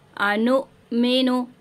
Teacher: हमज़ा साकिना को झटका देंगे